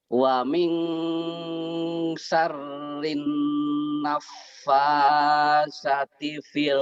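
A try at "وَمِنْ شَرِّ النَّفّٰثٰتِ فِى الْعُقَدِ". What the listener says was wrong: Sanya panjang. Sanya kan 2 tuh.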